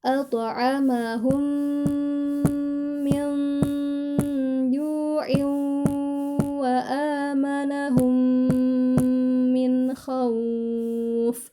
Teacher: Min itu juga dengung ya. Ikfa. Min ditahan juga selama 3 harokat.